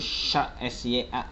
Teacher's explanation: jadi ada anginnya gitu, seperti orang memberitahu orang lain untuk diam gitu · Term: shin